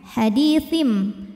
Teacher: cara bacanya bunyi tanwin n diganti bunyi mim sukun m hadiim sambil berdengung tahan hadiim dalam membaca hukum iqlab ini ada